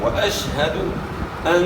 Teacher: نون مشدد ہے، نون مشدد پہ جو ہے نا آپ نے ایک الف کے مقدار کے برابر غنہ کرنا ہے۔